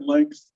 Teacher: There's no K in there, but it gets inserted frequently enough.